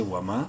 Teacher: میم کو ایک الف کے برابر لمبا کریں گے